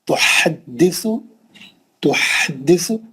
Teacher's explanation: ہا کو اچھا پڑھیں گے آپ مرکزی حلق سے. اس کے بعد سا کو زبان لگائیں گے.